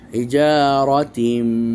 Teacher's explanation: রতে জবর আছে এই জন্য র মোটা, পুর মুফাখাম